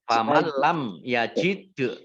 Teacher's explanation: Faman lam yajid, nun sukun bertemu dengan huruf lam, bacaan idgham bila gunnah, masuk dengan tidak mendengung. Jadi masuk ke lam ditandai dengan lamnya ada tasdidnya.